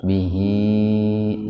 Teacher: kalau yang ini hi-nya dibaca panjang karena sebelum huruf h huruf hidup ya, sehingga menjadi mad silah qasirah, baca panjang dua ketukan